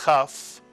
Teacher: the kaf is pronounced as a chaf, slight clearing of the throat